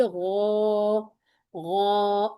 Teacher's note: اب جب ہمیں غین ملا ہے تو اس الف نے بھی پر ہونا ہے، ٹھیک ہے، کیونکہ غین کو پر پڑھنا ہے، اس کو مفخم پڑھنا ہے، تو یہ والا الف بھی غا، غا، اور 2 کاؤنٹ بھی بنیں گے، کیوں، غین فتحہ الف سکون غا، ٹھیک ہے۔